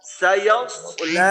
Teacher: এখানে সদের উচ্চারণ করলে সিনের মতো না হয়